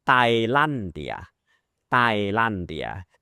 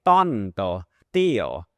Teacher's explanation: the Spanish T is actually the unaspirated T sound